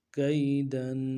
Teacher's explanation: کاف یا زبر کئی، کاف یا زبر کئی، دال دو زبر دن، اگلا لفظ ہے دال، اس کے اوپر تنوین ہے، تنوین کا مخرج ہے کہ ایک الف کی مقدار میں اس کو کھینچنا ہے، غننے کو ایک الف مقدار میں کھینچ کے پڑھنا ہے۔ دال دو زبر دن، دن ملائیں گے سارا، کئی دن۔